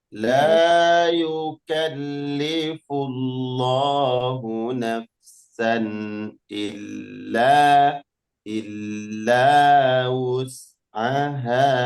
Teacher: pada lafaz la, mad tabi'i, mad artinya dibaca panjang.